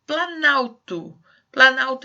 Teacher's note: vocês viram que o o ali da palavra plano ele desaparece